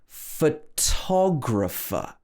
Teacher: So in this word, we stress the to.